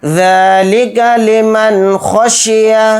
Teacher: ذال کے اوپر کھڑا زبر ہے، ذال کو تھوڑا کھینچ کر پڑھیں گے